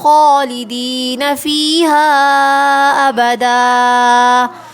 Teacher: یا مدہ ہے اور یہاں ہا کے اوپر مد ہے، تو ہم اس کو کھینچیں گے